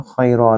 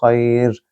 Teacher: خی میں یا لین دوبارہ ہے اور اس کے بعد رکنے کی علامت ہے لہٰذا خیرا نہیں بلکہ خیر